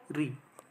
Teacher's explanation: ऋ का जब हम उच्चारण करते हैं तो हमारे मुख में थोड़ी सी कंपन की अनुभूति होती है इसलिए ऋ को प्रकंपित स्वर भी कहा जाता है।